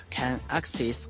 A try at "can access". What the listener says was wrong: So here he says a long E instead of a short E. Access. Access.